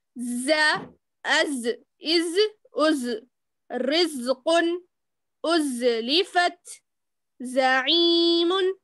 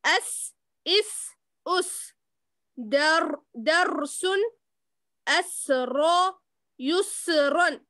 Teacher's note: سیٹی کی طرح آواز نکالی جاتی ہے. وہ حروف یہ ہے ز, سین, صاد. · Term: حروف صفیر